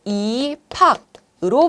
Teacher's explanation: 비읍과 히읗이 만나서 축약 일어나게 되죠. 그래서 피읍으로 발음이 되는 것이고요.